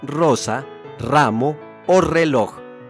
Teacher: las cuales no entraremos en detalles, como el hecho de que la R inicial en una palabra sea siempre rótica, vibrante y múltiple , es decir, ese sonido fuerte característico que tiene hoy en